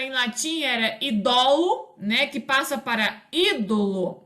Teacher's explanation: na outra palavra o idol né que passa para ídolo né o acento tônico ele recua né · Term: recuo do acento tônico